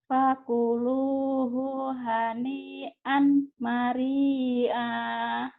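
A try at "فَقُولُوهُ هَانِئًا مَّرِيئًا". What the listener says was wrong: Annya jadi idgom ya. Fakuluhu hani am mari'a.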